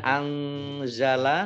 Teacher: nun sukun bertemu dengan huruf ZA bacaan Ikhfa dibaca samar-samar